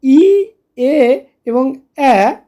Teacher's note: ই, এ এবং এ উচ্চারণের সময় কিন্তু আমাদের ঠোঁট দুদিকে প্রসারিত হয়ে যাচ্ছে, দুদিকে সরে যাচ্ছে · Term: প্রসারিত স্বরধ্বনির